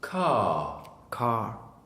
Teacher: There's no R sound. It's just K and R.